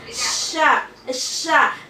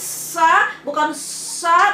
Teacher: Tengah lidah, antara lidah bagian tengah, kemudian dia menempel ke langit mulut atas bagian tengah pula.